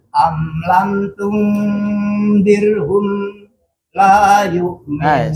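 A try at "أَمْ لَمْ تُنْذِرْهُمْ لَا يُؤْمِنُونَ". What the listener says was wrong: Sekali lagi jangan saktah. Am lam tundirhum la yu'minun.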